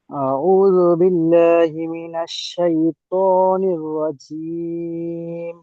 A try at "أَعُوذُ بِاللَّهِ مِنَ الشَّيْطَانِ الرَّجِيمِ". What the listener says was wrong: আপনি আরেকটু সময় নিয়ে পড়বেন। আপনি মনে করেন যতটা সময় নিয়ে পড়লেন, এই পড়াটাকে আরেকটু স্থির গতি আর এবং একটু মজবুতি।